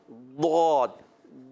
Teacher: اس کی ایک صفت ہے, صفت استطالت, یعنی طویل ہونا. تو یہ اپنے مخرج میں طویل ہوتا ہے, لمبا ہوتا ہے, لمبا ہو کر پھر ادا ہوتا ہے